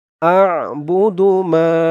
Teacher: মা এক আলিফ টান জবরের পরে খালি আলিফ